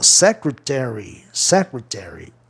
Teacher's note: A palavra é antiproparoxítona. A sílaba tônica cai em SE, na quarta sílaba de trás para frente.